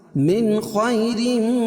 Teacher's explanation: نون ساکن کے بعد حروف حلقی کے 6 حرفوں میں سے خا ہے تو یہاں اظہار کریں گے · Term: اظہار حلقی